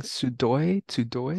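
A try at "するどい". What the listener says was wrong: So you forgot the do part.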